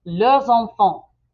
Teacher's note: But let's say they have multiple children, leurs enfants. And there is a Z sound there because enfant begins with a vowel.